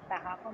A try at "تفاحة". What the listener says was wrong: Tufaha. This is not tafaha. This is tufaha. There is dhamma on ta. In Arabic, we do not read, we do not write this arkaz, but we remember it.